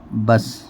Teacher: با سین زبر بس، یہ جو سین ساکن ہے یہ قلقلے کا حرف، قلقلہ کے 5 حروفوں میں سے نہیں ہے، اس کی آواز بھی لوٹ کر نہیں نکلے گی